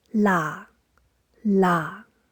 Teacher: tone 4 low pitched stays at the same pitch